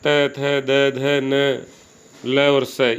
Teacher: ये दांत से उच्चारित होते हैं, इसलिए इनको दंते कहा जाता है